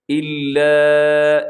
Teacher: اسے کہا جاتا ہے مد منفصل، مد جائز بھی کہا جاتا ہے، اسے آپ نے لمبا کرنا ہے 3-4 سیکنڈ تک